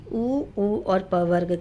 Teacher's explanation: उ और प वर्ग के लिए हमको ओठों की जरूरत पड़ती है। होठ के बिना इनका उच्चारण असंभव है।